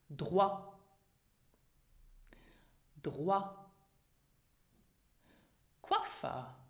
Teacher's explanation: the diphthong OI is not pronounced oi, but it is pronounced as in French wa.